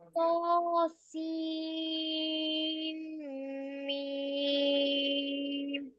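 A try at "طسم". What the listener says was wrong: सीन को खींचिए proper, मीम मुशद्दद का strong गुन्ना कीजिए। सीन नहीं होगा, सीम होगा, ठीक है?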